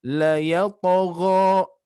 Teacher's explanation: Terus la yata. Di sini qalqalah huruf to sama dia mengarah bunyi pantulannya mengarah ke harokat fathah atau menyerupai harokat fathah.